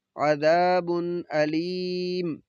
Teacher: ये दो पेश तनवीन है, बाद में हमज़ा, तो हमने इजहार करना है, गुन्ना नहीं करना